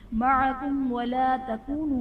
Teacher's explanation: میم ساکن کے بعد حرف با اور میم کے علاوہ واو ہے تو یہاں پر اظہار شفوی کا قاعدہ ہوگا، یعنی میم ساکن میں ہم غنہ نہیں کریں گے